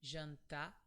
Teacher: In Brazil, some people would pronounce this R like an H sound, so it would be jantar. The final sound is very soft from your throat, just like h